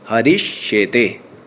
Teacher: यहाँ पर विसर्ग को तालव्य श हो जाता है